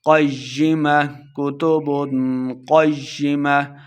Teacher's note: کتب اخفا کا قاعدہ ہے، یہاں پہ اس غنہ کر کے پڑھیں گے · قاف موٹا ہے، قاف کو یا کے ساتھ ملا کے پڑھیں